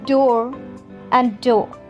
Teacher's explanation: British accent is non-rhotic. The R sounds are not pronounced unless followed by a vowel.